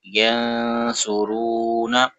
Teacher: red colour میں اخفا ہے تو غنہ کریں گے، اور را واو پیش رو، واو مدہ ہے، اس کو کھینچیں گے